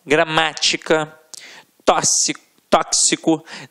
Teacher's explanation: a sílaba tônica estará na antepenúltima sílaba. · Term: proparoxítonas